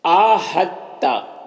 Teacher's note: آہتا، دیکھیں یہاں پر دال اور تا دونوں مشدد حرف ہے، تو دال ساکن حرف ہے، تا مشدد حرف ہے، تو دال جو ہے وہ تا کے ساتھ مدغم ہو جائے گا، دال تا کے ساتھ مدغم ہو جائے گا، یعنی دال کو نہیں پڑھنا ہے، تا کو پڑھنا ہے، یہ ہا کو تا سے ملا کر پڑھیں گے۔ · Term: ادغام متجانسین